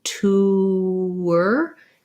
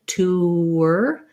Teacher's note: going from that rounded oo, tour, you're going to hear that you end up with a little bit of a w sound